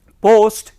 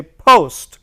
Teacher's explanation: So, Hindi pa and Hindi ba, they are different, but English pa and English ba, they are plosives, because you can hear more of a plosive sound. There is an explosion. For example, if I say post, here I am using Hindi pa, but when I say post, because you can see there is a lot of pressure, means the air is suddenly released between the articulars.